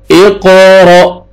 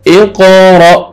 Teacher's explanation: قاف قلقلہ ہے، double sound آئے گا، حمزہ کو مد جزم ہے، جھٹکے سے پڑھیں گے۔ اقرأ، قاف موٹا اور حمزہ جھٹکے سے